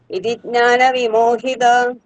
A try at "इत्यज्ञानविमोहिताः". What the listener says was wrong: ഇത്യജ്ഞാന ഇതി അജ്ഞാന ഇത്യജ്ഞാന വിമോഹിത. ഇതി അജ്ഞാന വിമോഹിത. ഇത്യജ്ഞാന വിമോഹിത. അത് ഒരുമിച്ച് പറയുമ്പോൾ ഇത്യജ്ഞാന വിമോഹിത.